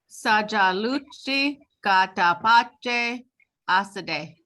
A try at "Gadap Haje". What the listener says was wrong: I just didn't hear the H, but sometimes it's hard to tell that. Dap Ha J.